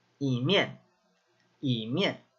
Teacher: And it's only on that character E, that number 1. But if it's followed by a fourth tone, it takes on a second tone sound. So, say something's done at the same time.